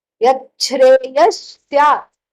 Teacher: Even though because of the Sandhi, Yat plus Shra, the Takara and the Shakara meeting one another makes it Cha